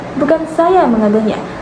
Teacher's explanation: Terdapat tekanan pada kata saya menandakan bahwa bukan ia yang mengambilnya.